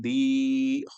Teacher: Kasrah before ya sakin, one alif long